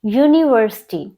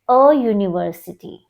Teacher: the word is beginning with a vowel U but it is giving a consonant sound y